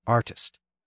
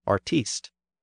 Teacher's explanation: the stress has shifted forward in the older version, artist. But the stress on the final syllable has been retained in the newer version, artiste.